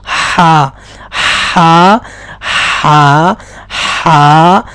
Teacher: یعنی وسط حلق یعنی گلے کے درمیان کے حصے سے یہ صاف طور پر پڑھا جائے گا